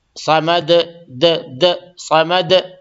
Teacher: تو اللہ الصمد، یہ صاد کو موٹا کریں گے، اس کا حق، اس کا حلق، اس کو جو مخرج ہے وہاں سے نکالیں گے. دال پہ قلقلہ کریں گے کیونکہ اس پہ بھی جزم ہو گیا. میں نے بتایا نا، قاف طا با جیم دال، اگر ان حرف پہ جزم آئے گی تو اس پہ قلقلہ ہوگا، یعنی آواز تھوڑی سی لوٹے گی.